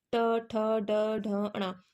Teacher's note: अगर हम ट बोल रहे तो हमारी जीभ मुड़ रही है थोड़ी सी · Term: मूर्धन्य